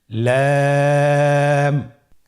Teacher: লাম হরফটি উচ্চারণের ক্ষেত্রে অবশ্যই বারিক হবে এবং 3 আলিফ টেনে পড়তে হবে।